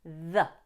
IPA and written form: ðə (the)